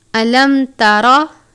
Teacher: میم ساکن ہے، اس کے بعد تا ہے، اظہار شفوی کا قاعدہ لگتا ہے، یعنی غنہ نہیں کرتے